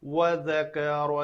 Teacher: واو واو کے لیے میں کہتا ہوں ہمیشہ شفتین گول، دونوں ہونٹ ان کو شفتین کہتے ہیں۔